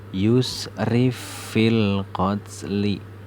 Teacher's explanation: Bacanya fa yang pertama ini yang sukun itu dihilangkan. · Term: idgham mutamasilain